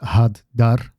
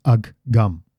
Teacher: Splitting that up, putting a pause in between those two H's. So you duplicate the middle consonant.